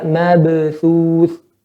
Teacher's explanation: Karena ba dia huruf istifal, bukan huruf isti'la, huruf tipis. Jadi pantulan juga tipis.